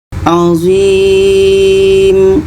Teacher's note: zui ini kita panjangkan karena ada ya, ada huruf mat ya. Dan setelah itu kita matikan mim. Mengikut mat ini juga mat arid li sukun.